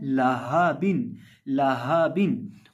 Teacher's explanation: ये जो हा है इसकी आवाज़ हलक के आखिरी हिस्से से निकलती है जो सीने के साथ मुत्तसिल है